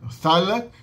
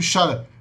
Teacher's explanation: é o TH do árabe, o som de tha, vira no hebraico she. Thalag, no antigo semítico, shalag.